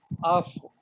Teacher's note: ऊपर के दांतों का किनारा नीचे के अंदरूनी होंठ से लगे। · नहीं जी, नीचे का सिर्फ, ऊपर के दांतों को। ऊपर के दांत जो हैं वो एक होंठ से लग रहे हैं, जो नीचे वाला है।